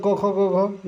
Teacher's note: क वर्ग का उच्चारण स्थान कंठ है। क वर्ग, क ख ग घ, ये सब कंठ से बोले जाते हैं।